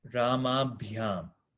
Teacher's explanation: the last letter is elongated before we get bhyam. So it becomes Ramabhyam, right?